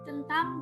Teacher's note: Kemudian dalam bahasa Indonesia, asimilasi fonetis terjadi pada bunyi nasal pada kata tentang dan tenang. Bunyi nasal pada kata tentang diucapkan apikodental karena bunyi yang mengikutinya yaitu T.